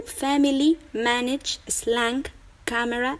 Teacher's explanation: There's another way to pronounce the short A, with the phonetic letter called ash, that sounds like ah.